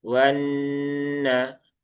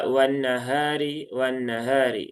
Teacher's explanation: nun yang bertasdid, nah, dia ada gunnahnya. Ya, gunnah musyaddadah, ditahan dulu, disempurnakan gunnahnya, ditahan 3 harokat.